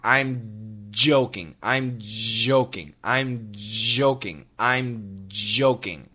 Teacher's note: I want you guys put your put your fingers on your throat and when you make the J sound, there should be vibration